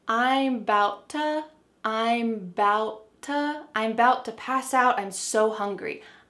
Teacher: instead of saying to, we say ta.